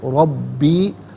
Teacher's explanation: را پر زبر ہے، را کو پر کر کے پڑھیں گے